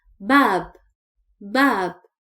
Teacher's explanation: We don't stretch the sound of Ba here because there is no vowel